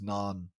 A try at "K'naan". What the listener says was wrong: Yeah, it's actually K-Naan, not Naan. No, it's Kanan, mate. Kanan. Surely you can't just call yourself Naan, surely.